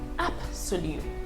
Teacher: Even though the letter in that word is a B and not a P, it's pronounced like a P